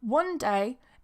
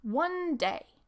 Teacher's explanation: we're joining that n and d together because they're both pronounced at the front of the mouth